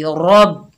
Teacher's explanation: रॉ को बा से मिलाएंगे और रॉ पुर पड़ी जाएगी